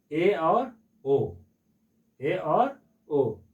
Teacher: संवृत स्वर के अपेक्षा थोड़ा ज्यादा मुंह खुलता है। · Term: अर्ध संवृत स्वर